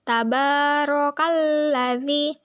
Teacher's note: Kemudian ro yaitu hukum bacaan tafhim karena ro barisnya di atas. Cara membacanya, ro dibaca tebal. Tebal yang dimaksud adalah pangkal lidah kita terangkat.